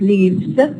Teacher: here we have voicing assimilation the F becomes a v